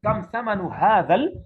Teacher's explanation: یہ دو چشمی ہاں ہے نا، اس کو نارمل نکالتے ہیں. حلق میں زیادہ زور نہیں دینا ہے اس میں. کم ثمن هذا، ہادا میں زور نہیں دینا.